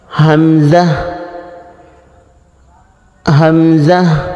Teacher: কণ্ঠনালী শুরু থেকে উচ্চারণ হবে শক্ত আওয়াজ হবে